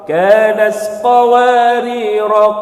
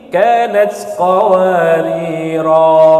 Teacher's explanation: tidak dibaca panjang ketika wasal, namun dibaca panjang ketika waqaf